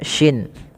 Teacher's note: Kemudian pelafal almquinnya usahakan dia jangan dibaca dengan almasriqu jangan terganti dengan huruf sin ya teman-teman. Tapi dia huruf syin yaitu makhrajnya dari tengah lidah kita. Huruf syin ya dia ada y-nya gitu ya. · tapi dia huruf shin, yaitu makhrajnya dari tengah lidah kita, huruf shin ya, dia ada y-nya gitu ya, shin.